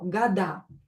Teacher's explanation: I pronounce it with A because O is not stressed.